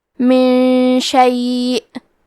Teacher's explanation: کلمت من کے آخری میں نون ساکن ہے، پھر حرف الشین ہے۔ کلمت شیء یہاں حکم ہے اخفاء تو ہم یہ حکم کو غنہ کے ساتھ ادا کریں گے